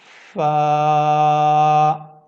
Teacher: آپ اپنے اوپر کے جو دانت ہیں اپنے ہونٹوں کے اپنے نیچے والے ہونٹ کے تر حصے کے ساتھ آپ اس کو لگائیں گے جو گیلا حصہ ہوگا.